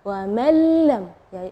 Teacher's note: huruf nunnya tidak ada, atau kita dibilang idgham ke huruf berikutnya dan gunnahnya tidak ada · idgham bila gunnah, tidak ada dengung ya